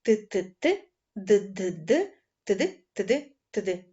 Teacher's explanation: підніміть язичок до альвеолу це такі горбики за верхніми зубами утримуйте таке положення і швидко стукайте язиком промовляйте ТТТ д д